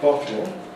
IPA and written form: ˈbɒtl̩ (bottle)